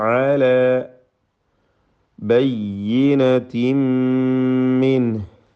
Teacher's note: ബയ്യിനത്തിൻ തൻവീനിനെ പൂർണ്ണമായും മീമിലേക്ക് ലയിപ്പിച്ച് മണിക്കണം. ഷദ്ദുള്ള മീമ് മാത്രമാണ് ഉച്ചരിക്കപ്പെടുക.